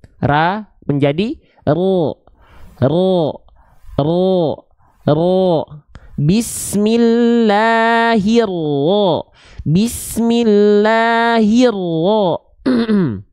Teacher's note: yang membuat huruf tebal vokal O-nya itu terdengar karena pangkal lidahnya diangkat. Bukan karena monyongin mulut.